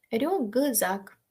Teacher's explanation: з впливає на к так що к стає Ґ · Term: тип асиміляції